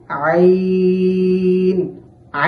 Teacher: মোটা করে উচ্চারণ করতে হবে য আইন আইন আইন উচ্চারণের সময় হলক অর্থাৎ কণ্ঠনালীর মধ্যবর্তী স্থান থেকে আইনটি উচ্চারণ করতে হবে